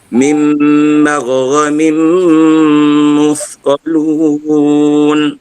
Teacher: Kena kamilkan dia, sempurnakan idghamnya. Apabila tanwin berjumpa dengan huruf mim, kena sempurnakan idgham, artinya dengung dan kita rapatkan kedua-dua bibir. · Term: idgham kamil